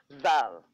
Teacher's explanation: It says dh, but it's pronounced as z. It is zal. Zal.